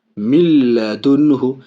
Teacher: دیکھیے نون کا لام کے ساتھ ادغام ہو رہا ہے لیکن ناک میں آواز نہیں جا رہی ہے، غنہ نہیں ہو رہا، بغیر گناہ کے، اس کو تام کہتے ہیں، بلا غنہ بھی کہتے ہیں۔